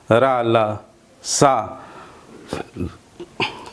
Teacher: रा और ला दांतों के मूल में, यानी जहाँ मसूढ़ा जिसे कहते हैं, उसे ही वर्त से कहा जाता है। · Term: दंत मूल